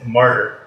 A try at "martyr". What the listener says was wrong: The way you're saying it, it sounds like murder.